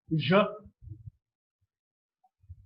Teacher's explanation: The vocal cords are held loosely together. When the air passes through, there's a lot of vibration involved. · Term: j sound